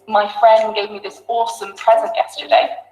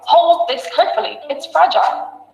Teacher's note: if I put it in a sentence, my friend gave me this awesome present yesterday, the d disappears.